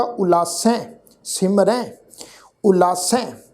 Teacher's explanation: ਜਿਹੜਾ ਇਹ ਹਾਹਾ ਅੱਖਰ ਸਵਰ ਆ ਜੀ, ਇਹ ਸੱਸੇ ਅੱਖਰ ਦੇ ਨਾਲ ਮਿਲਵੀ ਟੋਨ ਵਿੱਚ ਉਚਾਰਨ ਹੋਏਗਾ। ਉਲਾਸੈ ਸਿਮਰੈ ਉਲਾਸੈ।